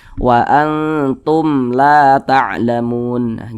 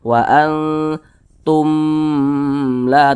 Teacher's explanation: Tapi kalau ada huruf mim sukun di depannya bukan huruf ba, huruf mim sukun di depannya atau setelahnya itu bukan huruf ba, bukan huruf mim, maka semua hukumnya namanya izhar syafawi. Karena dia izhar maka dibaca jelas, tidak berdengung. Jadi baca pendek saja.